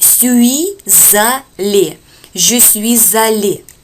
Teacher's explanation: Идут слияния, да, здесь буква «s» сливается с «а» и получается «за». Мы читаем «je suis», то есть «suis allé», «je suis allé».